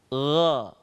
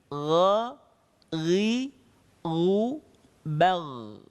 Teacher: Gha diucapkan dengan melembutkan suara kita dan terdengar suaranya menebal karena pangkal lisan kita terangkat ke belakang. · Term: huruf gha